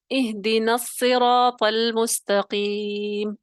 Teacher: اب کوئی الف یعنی کسی حمزہ کی آواز آپ کو سنائی دی؟ نہیں دی، کیونکہ وسط کلام میں حذف ہو گیا، نہیں پڑھا گیا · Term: حمزہ وصلی